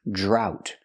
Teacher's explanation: We see the DR making the J sound like juice and jump, plus the R